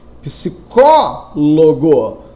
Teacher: Psicólogo, cuja sílaba tônica é o có.